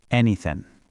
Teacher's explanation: Native speakers often pronounce ing endings as in.